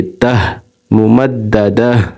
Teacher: یہاں پر اگر وقف کریں گے، یہ جہاں پر دائرہ آئے گا وہاں پر ہم وقف کریں گے تو یہاں پر وقف ہوگا، تو یہاں پر یہ ممددہ، یہ تا جو ہے تا دو زیر، یہ ہا ساکنہ بن جائے گی، ہا ساکن بن جائے گی. تو دال کو ہا سے ملا دیں گے